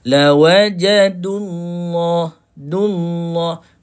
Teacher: Tak perlu panjang. Dia terus masuk kepada lam.